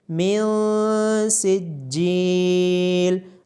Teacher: نون ساکن کے بعد حروف اخفاء میں سے سین ہونے کی وجہ سے نون ساکن پہ اخفاء کیا جائے گا